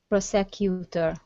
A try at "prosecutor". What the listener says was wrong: almost prosecutor the stress is at the beginning